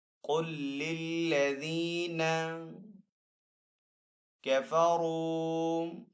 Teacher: را کے اوپر یہاں پہ پیش ہے تو را کو یہاں پہ پر پڑھیں گے۔ آگے واو ساکن ہے، واو ساکن سے پہلے را کے اوپر پیش ہے تو یہاں پہ واو مدہ ہے، تو یہاں پہ بھی واو مدہ کو ایک الف دو حرکات کے برابر کھینچ کر ادا کریں گے۔